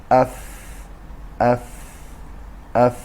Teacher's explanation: قسمت داخلی لب پایین همراه با نوک دندان‌های پیش آرواره بالا که مخرج فا است